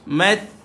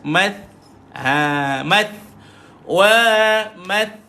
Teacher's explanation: Math tuan-tuan, huruf ta, ujung lidah dikeluarkan. Ujung lidah dikeluarkan.